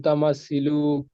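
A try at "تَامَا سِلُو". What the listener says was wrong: দেখুন, হারাকাতে যেখানে সেখানে হারাকাত করতে হবে, যেখানে মাদ্দা সেখানে মাদ্দা করতে হবে। লামটা টান হবে না, লামের উপর হারাকাত আছে, হারাকাতকে তাড়াতাড়ি পড়তে হয়। সিটা টান হবে, এখানে ইয়া সাকিনের ডান দিকে জের এসে।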